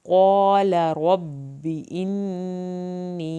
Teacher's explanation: क़ाफ को पुर करना है, लाम की ज़बर को लंबा नहीं करना।